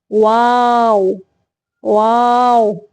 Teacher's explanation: वाव की अदायगी के वक्त दोनों होठों को गोल करना है, बिल्कुल बंद भी नहीं करना। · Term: वाव गैर मद्दा